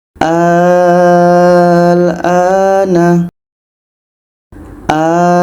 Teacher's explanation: Kita panjangkan 6 harkat A-nya, baru matikan huruf lam. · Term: mad lazim kilmi mukhaffaf